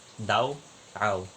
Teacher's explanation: ang d ay Napapalitan ng R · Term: pagpapalit ng ponema